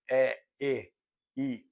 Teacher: Sons produzidos quando a ponta da língua sobe lentamente em direção ao nosso palato duro e, simultaneamente, vai diminuindo a abertura da boca. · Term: Anteriores